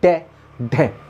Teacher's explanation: हमारी जो जीभ है वो आगे से मुड़ जाती है ऊपर और तालु को छूकर झटके के साथ निकलती है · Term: द्विगुण व्यंजन